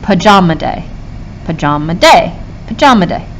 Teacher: stresses next to each other pajama day pajama day pajama day it sounds like day is stressed